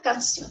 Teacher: Separo en sílabas la palabra, en can y después en sion, ¿cierto? Y me fijo que se carga la voz en sion.